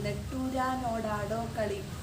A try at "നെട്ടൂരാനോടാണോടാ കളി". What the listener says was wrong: ആടോ കളിയല്ല, നെട്ടൂരാ കളി.